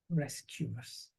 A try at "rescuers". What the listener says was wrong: This bit in the middle, I can really hear you saying cuers. It's very strong when you're saying it, but it's not quite so strong at that point. So if I just say the word again, so rescuers, rescuers.